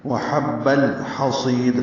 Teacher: لام ساکن پہ اظہار قمری ہے، حا وسط حلق سے ادا ہوگا، صاد پر ہے، سوئی یائے مدہ ہے، اور وقفاً دال ساکن ہو جائے گی تو قلقلہ ہوگا. · وحب الحصید میں دونوں حا وسط حلق سے ادا ہوں گے